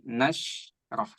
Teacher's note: Jadi tidak memantul karena shin ini bukan huruf qalqalah